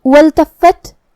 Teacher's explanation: کلمت والتفت یہاں الف ہے، یہ حمزۃ وصل ہے. ہم حمزہ کو ظاہر نہیں کریں گے، واو کے بعد حرف اللام پڑھیں گے. جو کہ لام پہ جزم ہے تو ہمیں لام کو ظاہر کرنا ہے.